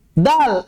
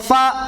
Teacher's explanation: Dal, tertahan di makhraj. Ba, tertahan di makhraj. Kalau fa, yang ngalir di makhrajnya. Walaupun dia ditahan di makhraj, tapi tetap mengalir.